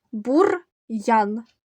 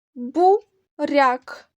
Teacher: бур'ян р ми вимовляємо твердо буряк р у нас пом'якшений був Дяк м'який А в нас перед апострофом нагадую букви позначають